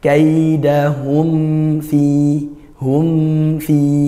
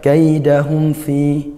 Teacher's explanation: mim dan fa itu makhrajnya sama, sama-sama di bibir. Kalau mim dua bibir, kalau fa gigi atas bertemu bibir bawah. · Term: izharnya